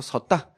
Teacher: 서었다에서 어가 사라지면서 섰다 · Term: 탈락